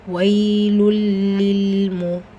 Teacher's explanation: ஸோ இங்கே லாம் இருக்குது. தன்வீனை தொடர்ந்து லாம் வரும்போது இதுஹாம் இலா குன்னா இணைக்கணும், ஆனால் குன்னா செய்யக்கூடாது.